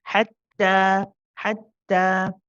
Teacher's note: you will not hear the hams. Okay, you'll only hear the shidda, the stopping of the sound.